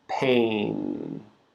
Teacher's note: Remember, we're moving our mouth with this vowel sound, A, but then we're finishing with the N sound.